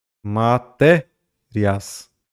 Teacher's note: Semivogal. Semivogal para vogal, eu estou crescendo, certo? Então, o ditongo ali é um ditongo crescente